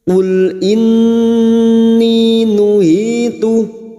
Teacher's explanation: nun yang bertasdid gunna musyaddadah kita dengungkan selama 3 harakat